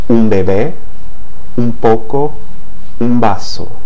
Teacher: If a final N precedes another word that begins with P or B, or even V, then it tends to be pronounced as an M